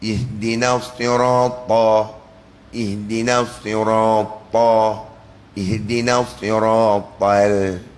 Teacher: Lam dinipiskan, jangan dibawa lam tebal sekali.